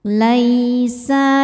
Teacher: huruf lin sebab ada ya sukun sebelumnya fathah. Cara bacanya cukup dilembutkan atau dilunakkan.